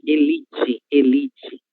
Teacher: Temos aí a sílaba tônica li, certo? Um outro exemplo de heterotônica.